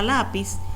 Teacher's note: llevan la sílaba tónica en la penúltima sílaba